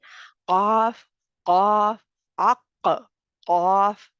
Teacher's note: قاف میں قلقلہ بھی پایا جاتا ہے تو گلے کے اندر نہیں اس کو لے کے جانا